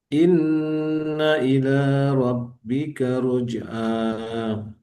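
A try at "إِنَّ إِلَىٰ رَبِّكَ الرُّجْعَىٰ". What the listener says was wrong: Oke, ada tasdid. Tahan sebentar di ro-nya. Rabbika ruj'a.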